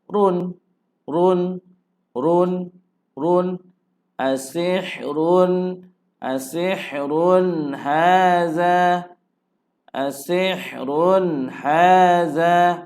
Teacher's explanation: Jadi sini tanwin bertemu dengan ha. Ha huruf izhar. Jadi tiada dengun. Tak boleh dengun lah. Cuma boleh jelaskan bunyi tanwin.